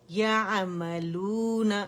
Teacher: عین میں توسط ہے، پارشلی آواز چلے گی